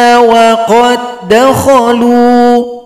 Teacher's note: di sini dal sukun berjumpa dengan dal ini adalah idgham main dal yang pertama telah gabung pada dal yang kedua